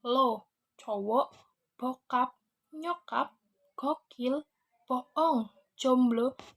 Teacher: vokal oh sebagai vokal belakang Tengah bulat dan tegang Disamping itu pokok variasi bunyi-bunyi vokal ditandai dengan munculnya bunyi vokal · Vokal O sebagai vokal belakang, tengah, bulat, dan tegang